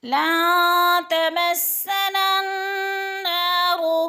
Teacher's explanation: النار کی نا پہ الف مدہ بھی ہے، ایک الف کے برابر کھینچ کر پڑھنا ہے۔ · نون کے بعد نون مشدد آ گئی ہے، سختی سے جمع کر پڑھیں گے